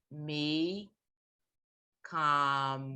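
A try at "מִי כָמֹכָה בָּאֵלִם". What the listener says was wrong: No, it's a ha this time.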